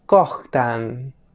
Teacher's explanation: la letra O, que en fonética se le conoce como vocal semicerrada posterior redondeada. La O suena como en el castellano, pero es un grafema poco usado, ya que solo se usa en Cuiznahuat en lugar de la U.